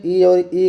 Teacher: तो ये हो जाएगा आपका तालव्य। तो ई और छोटी ई और बड़ी ई का उच्चारण स्थान तालव्य हो जाएगा